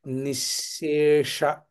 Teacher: నిశ్శేష అది నిజానికి కొంచెం ప్రాక్టీస్ చేయవలసినటువంటి సందర్భం. ఎందుకంటే తాళవ్య షకారం అవగానే వెంటనే మూర్ధన్య షకారం కలుస్తుంది అక్కడ. అందుచేత తాళవ్య మూర్ధన్య షకారములను వెనువెంటనే పలకడం అనేది కొంచెం అభ్యాసం చేయాలి.